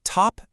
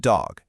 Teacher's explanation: the tip of your tongue touches that little ridge right behind your top teeth. It's the exact same mouth position, but tu is a voiceless puff of air, while duh is voiced.